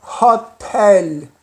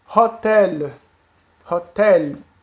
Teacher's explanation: o L aqui sempre vai ter som de L. Não é como no português do Brasil, que teria o som de U.